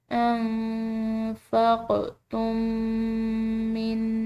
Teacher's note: تو جہاں پر بھی ایسا ہو کہ دو میم ہو، ایک میم ساکن ہو دوسرا میم مشدد ہو، تو ان دونوں میم کو آپس میں ملا کر ادا کیا جاتا ہے، یعنی کہ دونوں میم کو ایک میم کی طرح پڑھا جاتا ہے